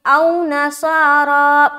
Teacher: پورا کا پورا را کو کھینچنا ہے ایک الف کے برابر